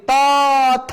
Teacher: আমরা যদি আবার আমাদের হাতের তালুটা মুখের সামনে নিয়ে একটু উচ্চারণ করি ত থ, তাহলে আমরা দেখবো ত বর্ণ উচ্চারণ করার সময় কম বাতাস বের হয়, সেই জন্য এটা হচ্ছে অল্প প্রাণ। আর থ উচ্চারণ করার সময় বেশি বাতাস বের হয়, সেই জন্য মহাপ্রাণ।